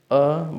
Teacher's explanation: कंठ ये सभी कंठ से बोले जाते हैं। अ बोलेंगे तो कंठ से आ रहा है, मीन्स गले से